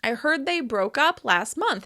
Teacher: It may seem a little easier to identify phrasal verbs in past tense forms because you can clearly hear that the particle is stressed and it sounds different from the noun version